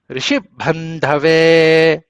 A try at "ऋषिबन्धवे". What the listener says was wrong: భావ నొక్కుతున్నారు మీరు భాగవతు చెప్తారు ధకారాన్ని చెప్పండి ఋషి బంధవే బంధవే లేదు బంధవే బంధవే కింద అనుదాతం వస్తుంది సార్ చెప్పండి సారు ఋషి బంధవే